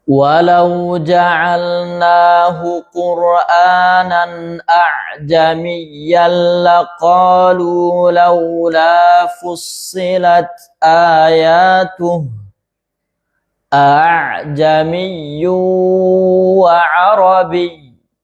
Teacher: Ada hamzatain. Hamzah yang pertama di tahkik bacanya jelas. Hamzah yang kedua di tashil bacanya ee dipermudah ya.